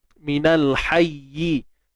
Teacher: Minal hayyi, bila kita berhenti maka kena lonjakkan sedikit suara. So cara dia ialah, pertama, dia tidak panjang, tapi kena lonjak suara. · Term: an-nabru